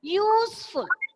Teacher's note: The word useful, it starts with a vowel, but it has a sound of Y-U.